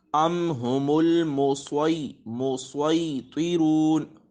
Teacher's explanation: یہ سواد پر پڑھا جاتا ہے، حروف مستعلیہ میں سے ہے اور حروف صفیریہ میں سے بھی ہے، سیٹی کی آواز بھی آئے گی